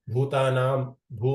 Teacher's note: ಎರಡು ಭೂ ಮತ್ತೆ ಭ ಎರಡು ಕೂಡ ಮಹಾಪ್ರಾಣ ಉಚ್ಚಾರಣೆ ಮಾಡಬೇಕು · ಭೂತಾನಾಂ ಭೂ ಮಹಾಪ್ರಾಣ ಇದೆ ಮತ್ತೆ ಆದಿಭೂತಾಯ ಆ ಭೂ ಕೂಡ ಮಹಾಪ್ರಾಣ ಇದೆ